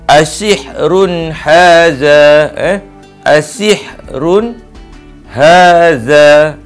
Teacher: Asihrun kalimah pertama, haza kalimah kedua. Jadi bacaan dia jelas, dia tak ada dengung, dan dia tak ada idgham. Dia ni dikatakan izhar, yang mana menyatakan sesuatu tu dengan jelas, dengan nyata dan terang.